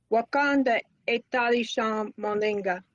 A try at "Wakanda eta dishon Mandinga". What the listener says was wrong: Little more état de champ. I can't hardly hear that D in there. État de champ.